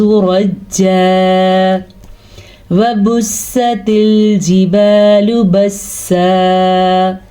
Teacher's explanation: وبستل، وبوستل کا تو شد بھی رہے گی اور واو مدہ بھی آ گیا با کے بعد، تو ہم پڑھیں گے وبست الجبال لام پیشلو، لیکن با زبر الف با اسے کھینچ کے پڑھیں گے کیونکہ یہ الف مدہ ہے · وقف کی وجہ سے 2 زبر ایک الف کے ساتھ ایک زبر پڑا جائے گا